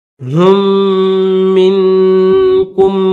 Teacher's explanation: हा के बाद दो मीम है, पहला मीम छोड़कर दूसरा मीम पढ़ेंगे। ये जो हा के साथ मीम है, इस मीम को नहीं पढ़ेंगे, जिस मीम के ऊपर तशदीद है इस मीम को पढ़ेंगे।